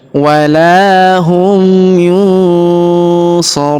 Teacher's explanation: Huruf ru kita panjangkan 2, 4 atau 6 harokat karena di depan huruf ru terdapat waw sukun sebelum huruf pemberhentian, dan huruf pemberhentian huruf na kita sukunkan atau kita matikan.